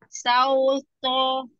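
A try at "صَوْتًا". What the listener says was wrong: Tonya tebal Sauto. Ah, bener sinnya, sinnya bener yang tadi. Sauto. Pakai sin biasa, sasa. Sauto. Tadi maunya yang dikoreksi tonya, bukan sinnya. Jadi sinnya tidak perlu berubah. Itu benar-benar sin. Sasa. Sauto.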